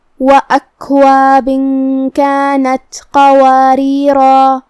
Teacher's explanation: کلمت قواریرہ میں یہاں قاف کو ہم بھاری آواز میں پڑھیں گے. یہاں را کے نیچے زیر ہے تو یہاں را کا حکم ہے ترقیق، ہم حرف الرا کو ہلکی آواز میں ادا کریں گے · اگر ہم یہ آیت پہ رکتے ہیں تو ہم مد الف کو ظاہر کریں گے، مطلب ہم اپنی آواز 2 مد کے برابر لمبی کریں گے.